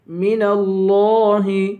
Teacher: لفظ اللہ کے لام کو موٹا پڑھیں گے، لام پر کھڑا زبر ہے، اسے ایک الف کے برابر کھینچ کر پڑھیں گے.